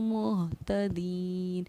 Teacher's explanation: یا ساکنہ سے پہلے زیر ہے تو یا حروف مدہ بن گئی، اس لیے دال یا زیر دی کو ایک الف کے برابر ہم نے کھینچ کر پڑھا